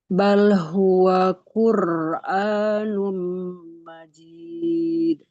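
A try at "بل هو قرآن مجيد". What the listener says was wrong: Iya, seperti itu ya. Ada tawasud. Jadi nggak sampai putus.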